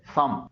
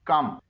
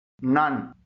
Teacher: جب ایم یا این سے پہلے او آئے تو او سے ہلکی سی آ کی ساؤنڈ نکلتی ہے، جیسے سم، یہاں پر ایم سے پہلے او آیا ہے۔